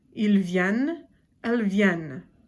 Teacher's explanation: for the plural, third person plural, it's vienne, and you definitely have to say the N in it